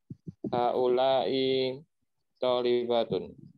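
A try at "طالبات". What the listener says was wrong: Tolibatun. Tadi sudah saya sampaikan ya, kalau membaca jamak muannats salim itu harus dikontrol di bagian ujungnya. Bacanya panjang. Kalau antum bacanya pendek, itu nggak ada bedanya dengan bentuk mufrad secara audio. Ya, antum tulisannya tolibatun, tapi antum bacanya tolibatun.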